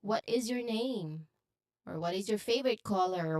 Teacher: the intonation typically rises at the end because this is a question statement